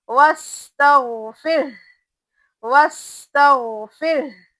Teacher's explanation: र को बारीक पढ़ेंगे और आखिर में हा की भी आवाज आना